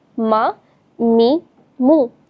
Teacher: اس کے بعد ہے میم۔ میم ہونٹوں سے ادا ہوتا ہے، ٹھیک ہے، یعنی کہ جب دو ہونٹ آپس میں ملتے ہیں نا، میم تو ادا ہوتا ہے۔